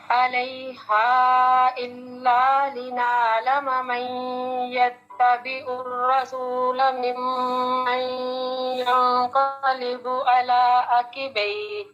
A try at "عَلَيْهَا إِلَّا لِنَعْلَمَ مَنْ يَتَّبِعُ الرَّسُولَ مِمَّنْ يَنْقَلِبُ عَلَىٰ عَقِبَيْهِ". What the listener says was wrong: ایک تو آپ کا عین کا مخرج ٹھیک نہیں ہے. لنعلم تو نہیں ہے، من یتبع الرسول تو نہیں ہے، اور پھر آپ نے علیہا اس کا بھی عین ٹھیک نہیں پڑھا، اور مد کی مقدار پھر پوری نہیں کی آپ نے.